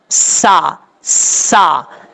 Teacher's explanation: یہ جو بیچ میں آواز آ رہی ہے یہ سیٹی ہے، کیونکہ حروف صفیریہ میں سے ہے سین، اس لیے اس کو پڑھنے کا طریقہ یہی ہے۔